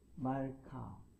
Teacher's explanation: 말카는 강세는 종음절 카에 있습니다. 카는 읽기는 개음절 같지만, 자, 멜렉 왕이라는 말의 표현이죠.